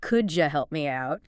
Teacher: And notice how the sounds actually change. Sometimes sounds blend together, like the D and Y and could you making a J sound.